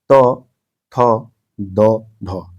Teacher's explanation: ऊपर के दांतों पर जीभ लगाने से होता है